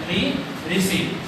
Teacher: अब तीसरा आ गया, तीसरा है मूर्धन्य, जिसके उच्चारण में अपने मूर्धा का प्रयोग किया यानी कि मसूड़ों का प्रयोग किया जाता है वो होता है मूर्धन्य स्वर। ये एक ही होता है री, ऋषि।